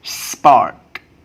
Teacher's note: And another example, park is aspirated, but you don't forget that remain unaspirated after s at the beginning of a word